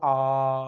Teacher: मुंह आपका पूरा खुलेगा। तो मात्र और मात्र एक ऐसा स्वर है जिससे आपका मुंह पूरा खुलता है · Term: बिब्रत